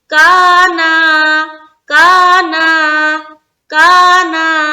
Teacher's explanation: جتنا ہم کا کو اسٹریچ کر رہے یعنی کہ 1-2 سیکنڈ، اسی طرح نا کو بھی کریں گے. نا میں الف مدہ ہو رہا ہے اور کا میں بھی الف مدہ ہو رہا ہے.